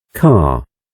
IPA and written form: kɑːr (Car)